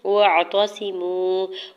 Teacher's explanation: وَاعْتَصِمُوا، واو کے زبر کو عین ساکن کے ساتھ ملاتے ہوئے پڑھنا ہے تاکہ اوپر سنگل زبر جلدی سے ادا کریں گے۔ صاد کے نیچے سنگل زیر، صاد حروف مستعلیہ میں سے ہے، پر پڑھیں گے۔